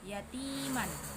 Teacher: Hukum tajwid mad thabi'i karena ta kasrah bertemu ya sukun. Cara bacanya dipanjangkan dua harakat. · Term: mat tabi'i